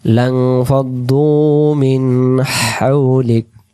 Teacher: লম্বা হা হলকের মধ্য থেকে শোষ আওয়াজ আসবে। মিন হাউলিক এবং কাফের জবরটাকে আরো 2 সেকেন্ড করবো